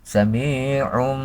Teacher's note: yaitu hukumnya iqlab yang namanya iqlam yaitu menukarkan ya menukarkan tanwin menukarkan tanwin ke suara mim serta memakai Gun gunah samium walaupun ditulisnya Samiun tanwinnya kelihatan tanwin